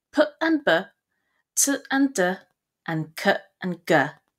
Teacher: from the name plosives are explosive sounds so called because they're sounded through a rapid release of air past the points of complete closure in the mouth